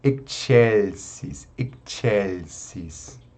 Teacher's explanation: Aqui a gente tem o som do C, né? Como o C está junto com a letra E, então a gente pronuncia como tch, como na nossa palavra tchau. Né? Então, a gente une o som do X e o som do C, né?